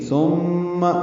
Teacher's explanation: ثم میم مشدد پہ غنہ ہے، سا بالکل نرمی سے ادا ہوگا، زبان کی نوک سامنے کے دانتوں کے اندرونی کناروں سے لگائیں گے